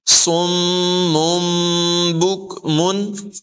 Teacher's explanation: حرف با آنے کی وجہ سے یہاں پر اقلاب ہوگا، یعنی تنوین کو میم سے بدل کر اخفا کر کے پڑھیں گے